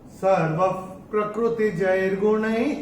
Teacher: ये चरण की समाप्ति पे है, चौथे चरण की समाप्ति पे। तो विसर्ग का उच्चारण ह ही होगा।